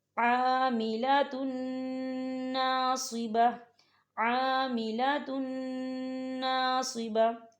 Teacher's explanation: ہم تنوین کو جو ہے نون کے اندر مدغم کریں گے اور یہاں غنہ کریں گے اور غنے کی مقدار جو ہے 2 سے 3 سیکنڈ ہوگی.